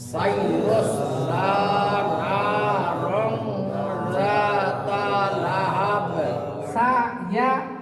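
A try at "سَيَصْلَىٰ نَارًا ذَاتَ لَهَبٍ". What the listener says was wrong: সব যখন ধরবেন তখন মোটা হবে। সা ইয়া যেন মোটা না হয়।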